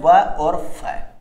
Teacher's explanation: इस शब्द को देखकर ही लग रहा है दांत और ओष्ठ से, जिनको मतलब ऐसे वर्ण जिनका उच्चारण दांत और ओष्ठ दोनों से मिलकर संयुक्त रूप से होता हो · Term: दंतोष्ठे व्यंजन